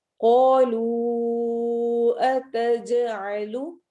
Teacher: अलिफ लंबा होगा, कॉफ को हैवी पढ़ेंगे